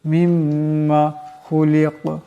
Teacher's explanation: এখানে দম সারলে কাফ সাকিন হয়ে যাবে, কাফ কলকলা হরফ আওয়াজটা টক্কর খাবে।